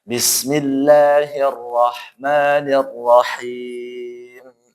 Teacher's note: Kemudian lafaz Allah ti tipis, rnya tebal, ha-nya bersih. Nah, kemudian sebelum ke mim tidak boleh ada dengungnya.